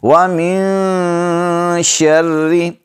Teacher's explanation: نون پر اخفا کریں گے، نون ساکن کے بعد حروف اخفا میں سے شین ہے